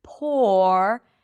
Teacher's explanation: The P is aspirated here. So there is a little H here. Poor. Make sure that the R is not too dominant.